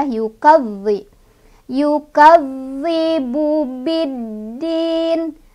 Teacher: zal ini bertasydid, jadi ditekan tapi nggak usah ditahan juga, ditekan aja.